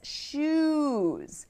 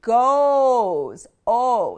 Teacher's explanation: So we went from an ooh sound to an oh. It's a slight difference, but it makes a very big difference when you're saying these words.